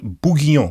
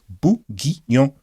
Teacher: It's got 3 syllables, bourguignon. So the N is kind of silent. It's kind of like a nasal O-N, and the U is silent as well, as is the R in a way.